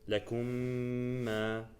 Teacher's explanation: you have to provide a complete ghunna. It's like the highest level of ghunna.